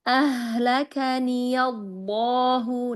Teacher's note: pada ha sukun di sini ya mau lebih dialirkan rokhwahnya.